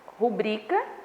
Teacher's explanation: Tem muita gente que fala gratuito, mas é errado, tá? Então, a palavra rubrica, a sílaba tônica é no bri